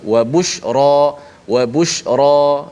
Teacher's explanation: Wa busyra ra tu dibaca dengan tebal. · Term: ra tebal